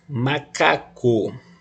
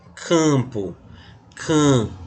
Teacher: o M, ele não faz nasalizar a vogal, diferente de aqui, ó, campo, can, aqui ele nasalizou, aqui não, fica como vogal oral.